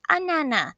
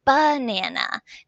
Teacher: he was leaving off that b at the beginning so as his parent was saying it back she was really